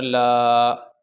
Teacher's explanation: الف ساکن سے پہلے یہ زبر آ گئی، اس کی وجہ سے ہم اس کو لمبا کریں گے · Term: حروف مدہ